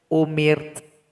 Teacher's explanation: Jadi bunyi hamas dari huruf ta juga mesti terdengar.